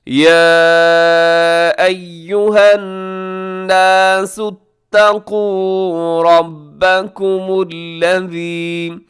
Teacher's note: رب میں را پر ہے، با کے اوپر تشدید ہے، مضبوطی سے اور را کو موٹا کر کے پڑھیے گا۔